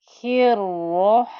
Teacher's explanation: The Ra, because it has a shadda, I must give time. And you can hear the noise through the 2 Ra's that are in that shadda.